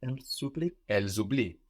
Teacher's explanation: Although we do hear it as a Z, an S between vowels in French, as in English, sounds like Z.